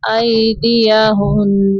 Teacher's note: تو کو بھی اوپر پڑھیں گے قطعن ایدیہن ہن نہیں کرنا نون کو حرکت نہیں دینی ایدیہن تھوڑی دیر نون پہ رکیں گے تاکہ نون کے اوپر تشدید کی ادائیگی ہو جائے